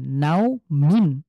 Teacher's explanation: লিনের হরফের পরে যদি আমি এখানে থামি তাহলে মিমকে সুকুন দিয়ে এই নাওকে এক আলিফ টেনে পড়বো